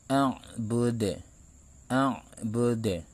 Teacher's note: salah satu qalqalah yang terdapat di akhir ayat dan pantulannya dibaca agak keras. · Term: qalqalah kubra